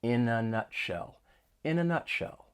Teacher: we link the final consonant sound of one word with the beginning vowel sound of the next word. So we can link the final consonant sound in with the vowel sound in the article in. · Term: linking